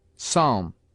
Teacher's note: P is sometimes mute, as in psalm, and between m and t